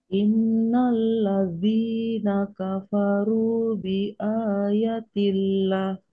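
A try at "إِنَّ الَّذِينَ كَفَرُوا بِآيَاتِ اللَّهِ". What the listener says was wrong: Ah, panjang ini. Bi ayatillah.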